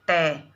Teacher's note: इसके बाद मूर्धा स्थान, इसके बाद मूर्धा स्थान यानी मसूड़ों से जब जीवा टकराती है, जैसे अपन बोलते हैं ट, तो ट में अपनी जो जीभ है वो मसूड़ों के पास से टकराती है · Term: मूर्धन्य वर्ण